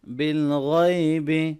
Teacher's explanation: غین کو موٹا پڑھیں گے، یا لین ہے اس کو نرمی سے ملائیں گے